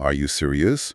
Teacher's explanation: L'intonation qui monte, typique des questions oui-non